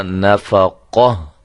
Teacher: اب ہم اس پہ وقف کرنا چاہتے ہیں تو اس کا طریقہ کار کیا ہوگا کہ اس گولتا کو ہم ختم کر کے صرف ہا اور وہ بھی ساکنہ ہم لگا دیں گے. گولتا کو ہائے ساکنہ میں تبدیل کر دیں گے